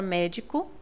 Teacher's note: na palavra médico é a antepenúltima sílaba e é a mais forte